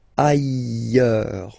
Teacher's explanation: final S not pronounced, and then you've got this y sound